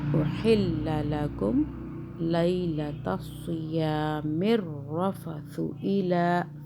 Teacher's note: ثا کو سافٹ بنایا ہے، زبان کو ہلکا سا باہر کریں